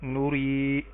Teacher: یا ساکن اس سے پہلے را کے نیچے زیر تو یا یائے مدہ ہے، اس کو ایک الف کے برابر لمبا کریں گے